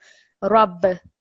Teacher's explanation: We don't cover that in this course, but just for you to be aware, because ba is part of a different set of letters that you vibrate when they have a sukoon on it